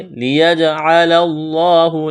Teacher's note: جیم پر قلقلہ کریں گے · لفظ اللہ کے نام سے پہلے زبر ہے، لفظ اللہ کے نام کو موٹا کرنا ہے